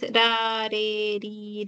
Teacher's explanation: Ahí le da un solo toque a la zona alveolar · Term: vibrante simple